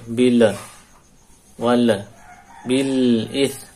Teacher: hati-hati dengan lam sukun lam sukun ini jangan sampai memantul